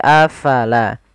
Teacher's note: Kemudian pada lafal afala, fa harus alirkan nafasnya. La jangan dibaca apalah, tapi afala.